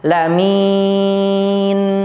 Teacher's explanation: di situ terdapat mad arid lisukun, dibaca panjang selama 6 harokat. Boleh 6, boleh 4, dan juga boleh 2 harokat.